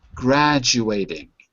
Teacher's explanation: Notice the T becomes a D.